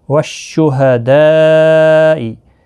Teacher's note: والشہداء یہاں پر مد متصل ہے، 4 الف کی مقدار کے برابر کھینچ کر پڑھیں گے۔